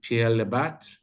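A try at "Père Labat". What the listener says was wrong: Père là-bas. Père, like father, not Pierre, like yeah.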